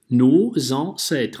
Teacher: связка должна быть, да? S обязательно связывается с гласной. Какой гласный? · в слове «предки» в первом слоге «an» звучит носовой «а»